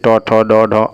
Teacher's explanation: मूर्धन्य जैसे को बोलने पर जीभ मुड़ के निकले बाहर